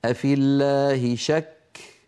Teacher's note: إن سبق اسم الجلالة بكسرة فتبقى اللام على أصلها من الترقيق